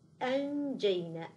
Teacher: لا نجعل الهمزه تدخل في غنه النون